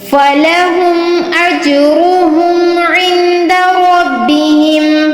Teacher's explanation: जीम पर हमने कलकला करना है और रॉ पर तफ़ख़ीम करेंगे, पुर पढ़ेंगे। कलकला मतलब होता है लफ्ज़ को हिलाकर पढ़ना, और नून साकिन जो है यहाँ पर हमने इख्फा करना है और रब्बिहिम रॉ पर तफ़ख़ीम करनी है, पुर पढ़ना है इसको।